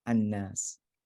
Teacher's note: So it becomes from al unas, it becomes al nas, and then the lam merges into the noon